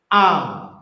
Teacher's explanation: Jadi hamzah itu berhenti dulu suaranya. A. Nafasnya juga ditahan.